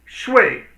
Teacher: shui means, which is fourth tone, it means actually to sleep